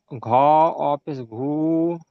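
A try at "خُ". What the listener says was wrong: বাংলা পড়ছেন, ঘ বলছেন, খ, খ অউপেশ খু,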